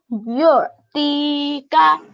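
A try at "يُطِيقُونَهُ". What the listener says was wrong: Well done. I could really hear the ayn sound now.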